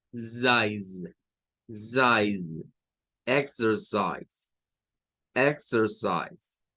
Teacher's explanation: Y la última parte, miren, toda esta que sería esto de aquí, la C suena a una S, esta I suena a I, que es el sonido largo, la E no suena, y la S del final suena como una Z